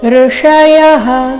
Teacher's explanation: ಲಭಂತೆ ಭ ಮೇಲೆ ಆಘಾತ, ಲಭಂತೆ ಬ್ರಹ್ಮನಿರ್ವಾಣಂ ಬ್ರಹ್ಮನಿರ್ವಾಣಂ ಋಷಯಃ. ಇಲ್ಲಿ ಸ್ವರ ಋ ಇದೆ, ಹ್ರಸ್ವ, ಅದರ ನಂತರ ಮೂರ್ಧನ್ಯ ಷ. ಋಷಯಃ ಯ ನಂತರ ಇರೋ ವಿಸರ್ಗದ ಉಚ್ಚಾರಣೆ ಹ ಎಂದು ಬರಬೇಕು.